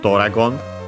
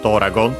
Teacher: As you have seen, accented on the do, so be careful, unlike in English.